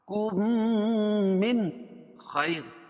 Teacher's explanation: من خیر یہاں ادغام ہوگا ادغام شفوی کیوں اس لیے کہ میم ساکن کے بعد میم آئے تو ادغام شفوی ہوتا ہے اور یہاں غنہ کر کے پڑھیں گے اور یہاں ادغام مثلین بھی ہوگا کیونکہ مخرج اور صفات کے